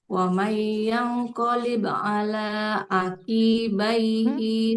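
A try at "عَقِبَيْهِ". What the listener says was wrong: Qafnya nggak panjang. Wa man yanqalib ala aqibaihi.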